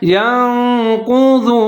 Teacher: ضاد کو موٹا پڑھنا ہے، ضاد کے اوپر پیش ہے، واو ساکن ہے